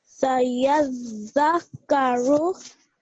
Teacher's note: you made sure that you stressed the ya when you joined the ya with the zal because the zal has a mushaddad sign on top of it